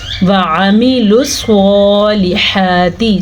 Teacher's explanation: صاد کو پر پڑھا جس طرح کہ طوا کو پر پڑھنا ہے، قاف کو پر پڑھنا ہے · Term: حروف مستعلیہ